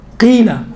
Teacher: قیلا بالکل باریک تلفظ ہوتا ہے کسر کے صورت میں, زیر کے صورت میں.